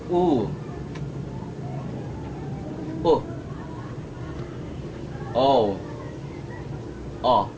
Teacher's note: It's easy to understand and remember this progression in this group because the final sound is O as in jaw, and my jaw needs to be lower more and more as I move from the first to the fourth vowel in this group. Watch closely and you'll see that opening as I move from the first down to the last. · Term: back vowel